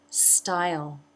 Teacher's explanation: make the V sound style another I as in buy diphthong jaw drops for the first part tongue moves up for the second part and the dark L · Style, another I as in by diphthong. Jaw drops, tongue is down, and then the mid-front part of the tongue raises to make the second part of the diphthong.